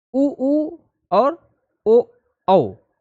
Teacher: उच्चारण करते समय ओष्ठ गोलाकार हो जाते हैं। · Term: वृत्त मुखी